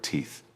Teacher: Please focus on the pronunciation of the word teeth. You must place your tongue between your teeth to create the th sound at the end. It is a soft sound, not a hard T sound.